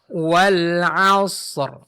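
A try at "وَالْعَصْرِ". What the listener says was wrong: Jangan terlalu lama jeda waktu antara huruf shad dengan ra ya. Wal 'asr.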